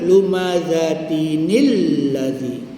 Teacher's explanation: nun sukun yang di tak ditulis di dalam penulisan tapi wujud pada pembacaan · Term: bertemunya dua sukun